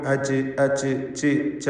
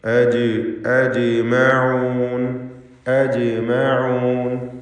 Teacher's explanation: പലർക്കും അച്ച് അച്ച് ച് ച ഒരു ചായുടെ ശബ്ദം വരും, അത് സൂക്ഷിക്കേണ്ടതാണ്. ജീം മജ്ഹൂറായ അക്ഷരമാണ്, അതിന് ഹംസ് ഉണ്ടാവുകയില്ല.